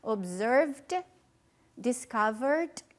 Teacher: aí a gente vai pronunciar só o D.